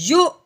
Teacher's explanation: اب ہم نے کیا کرنا ہے کہ جزم کو کس کے اوپر لگانا ہے، حمزہ کے اوپر۔ حمزہ کے اوپر جزم لگاتے ہوئے اس کو ہم نے جھٹکا لگاتے ہوئے پڑھنا ہے، واو کو بالکل ہم نے پڑھنا نہیں ہے